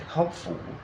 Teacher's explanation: in hopeful the stress remains on hope